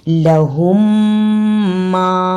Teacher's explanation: دوسری میم پر شد ہے، اس لیے میم کی آواز درمیان میں ٹوٹنی نہیں چاہیے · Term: ادغام شفوی